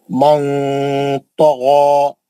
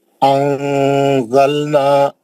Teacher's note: जबान की नोक नून के मखरज को लगने नहीं देना, उसको पकड़ के नीचे रखना, आवाज को नाक में लेके जाना, अच्छा गुन्ना करना, नून की आवाज को छुपा के गुन्ना करना, गुन्ना करके जो है पढ़ना, तो इख्फा सही इख्फा होता, अच्छा आवाज आता है इख्फा का।